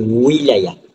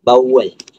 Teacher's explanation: separuh vokal dua bibir bersuara